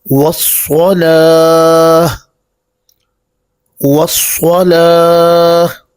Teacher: یہ صاد چونکہ حروف مستعلیہ میں سے ہے تو اس کو پر پڑھیں گے، باریک نہیں پڑھیں گے۔ وصلا یہ مجہول ہے، اس طرح پڑھنے سے بچیں گے۔